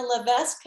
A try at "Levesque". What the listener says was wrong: It's Levesque. the S is silent.